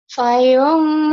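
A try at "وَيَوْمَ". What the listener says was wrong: Wayum, bukan fa. Kedengarannya kayak fa ya. Mungkin kau ngomongnya wa, tapi kedengaran di telinga orang kayak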